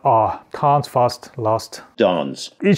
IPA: ɑː